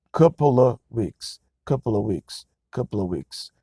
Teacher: The word of becomes a sound that English speakers call schwa, schwa.